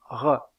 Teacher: Dans le cas de cette constrictive, il y a un resserrement du passage de l'air au niveau du voile du palais. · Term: constrictive vélaire